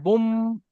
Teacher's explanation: وأكواب وأكواب وأكواب জি, এখানে বুন হবে না, বুম, দুটো ঠোঁট বন্ধ হয়ে بوم যাবে। ও আকওয়াব, وأكواب وأكواب জি, وأكواب মাওজুআহ, موضوعة.